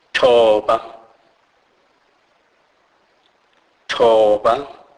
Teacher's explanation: This is an aspirated form of T sound.